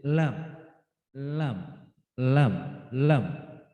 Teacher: ujung lidah bertemu gusi